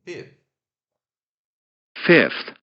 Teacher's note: E o TH, ele é lábio dental, não, ele é dental, fricativo, desvozeado também.